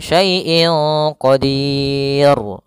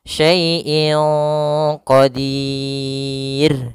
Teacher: Nah, tapi kemudian di sini huruf ra karena dia disukunkan maka di sini dia jatuh hukumnya adalah hukum rois yang kita namakan dengan ra tarq. Ro tarqik tidak boleh dibaca qadir jadi tebal. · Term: ra tipis